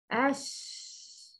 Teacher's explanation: The reason of Rakhawa is makhraj is open. The sound is weak because continuation of the sound when pronouncing the letter